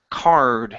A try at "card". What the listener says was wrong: Same vowel sound, the R vowel. R, card. Okay, bring the tongue up just a little bit more for that R.